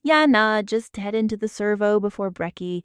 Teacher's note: Another feature worth noting is musicality. Australian English often has a light rise and fall that makes even a fairly plain statement sound conversational, casual, and slightly amused. There is, in many speakers, an ease to the delivery.